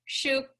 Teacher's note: we want to open the mouth and let that sound out of the vowels and have that A be as long as 2 tanmatras, 2 beats. It gets like 2 measures instead of 1.